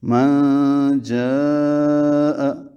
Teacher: نون ساکن کے بعد جیم آنے کی وجہ سے نون کی آواز کو چھپایا گیا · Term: اخفاء